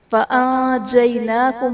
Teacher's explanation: نون ساکن کے بعد حروف اخفاء میں سے جیم ہے تو یہاں پر اخفاء کا قاعدہ ہوگا، یعنی نون ساکن میں ہم غنہ کر کے پڑھیں گے۔ فَأَنْجَيْنَاكُمْ میں یا ساکن سے پہلے زبر ہے، یا لین کا قاعدہ، اس لیے میں سے بغیر کھینچے بغیر جھٹکا دیے نرمی سے معروف پڑھیں گے۔